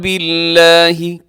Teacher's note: لفظ اللہ باریک ہے، اس سے پہلے با کے نیچے زیر ہے